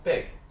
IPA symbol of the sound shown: ɪ